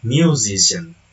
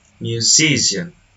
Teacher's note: The suffix ian attracts stress to the syllable immediately before it, resulting in stress movement from the first to the second syllable.